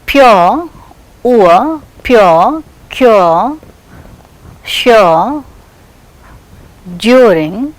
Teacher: the glide takes place from a centralized back rounded vowel just above half close to central unrounded vowel between half close and half open.